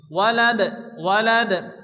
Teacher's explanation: আয়াতের শেষে দাল সাকিন, দাল কলকলার অক্ষর হালকা ধাক্কা দিয়ে পড়তে হবে